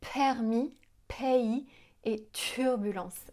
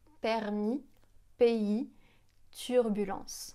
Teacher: On souffle pas en prononçant ces sons de consonnes.